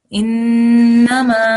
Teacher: noon gunna, which we have to hold our nasal sound